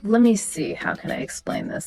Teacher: The let me see stays pretty level. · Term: Level intonation